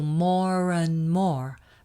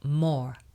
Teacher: The English do not pronounce that R sound at the end unless the next word is followed by a vowel sound at the beginning, like and. So more and more, but just more.